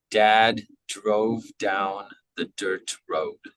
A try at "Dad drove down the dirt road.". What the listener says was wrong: Excellent.